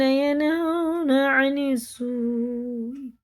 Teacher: مد متصل ہے کیونکہ اس کے بعد حمزہ آ رہا، 4 الف کے برابر سے کھینچ کے پڑھنا